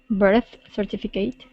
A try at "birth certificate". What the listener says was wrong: Good, yeah, and this would be an it sound at the end. Birth certificate.